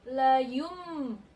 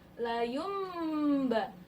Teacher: nunnya berubah bunyinya menjadi mim. Layumba, nunnya berubah mim bunyinya, bukan nun lagi, tapi ini ditandai di atas mim, berubah nun mati ini berubah bunyinya menjadi mim. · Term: iqlab